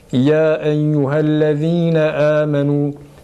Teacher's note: Med-i munfasıla yine böyle. Mesela ya eyyühellezine amenu ayetini okuduğumuz zaman o yayı uzatmadan okuyabiliriz pekala